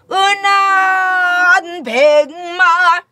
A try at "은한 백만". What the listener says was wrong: 그치 아니 그 높은 음에서 좀 길게 빼다가 내려와야 돼 오르 아니 돼 오르금금식 은한 백마시다